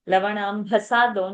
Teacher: don't miss the bha mahaprana there